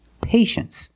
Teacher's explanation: You see T-I-E in the second syllable. You know the T is pronounced sh.